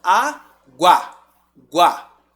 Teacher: o u você nem pronuncia Quem tá preponderando aqui é o a